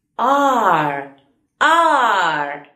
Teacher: Es como una A muy larga, casi la R no se escucha al final.